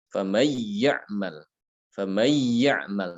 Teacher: Jadi dia baca cuma ditekan saja ke ya tanpa guna.